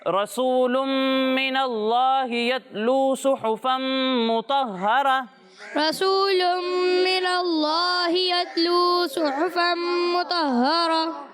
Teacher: اس میں جلالت کے لام سے پہلے زبر ہے، لہٰذا یہاں پر لام کو پر پڑھنا ہے